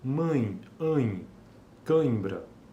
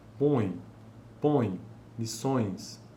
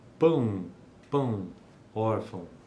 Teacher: são sempre decrescentes vogal nasal E semivogal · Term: ditongos nasais